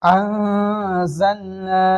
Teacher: الف مدہ کو ایک الف کے برابر کھینچ کر پڑھیں گے، جیسے نون الف زبر نا انزلنا۔